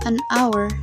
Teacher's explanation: For example, the word hour starts with the letter H, but the H is silent. So, the word actually begins with a vowel sound A. That's why we say an hour, not a hour.